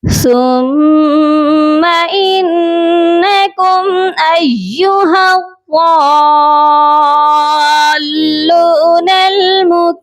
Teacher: ثم سا کو میم مشدد کے ساتھ غنہ کر کے ملائیں گے، اور سا نرم حرف ہے، اس کو نرمی سے پڑھا جائے گا۔ انکم نون مشدد ہے، اسی وجہ سے نون پر غنہ کریں گے۔ ثم انکم ایہا، حمزہ یا زبر ایا پیش یو، ایو یا مشدد ہے، اسی وجہ سے یا کو سختی سے پڑھا جائے گا۔